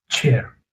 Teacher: Next is your affricate sounds. Air is stopped first, released slowly with friction.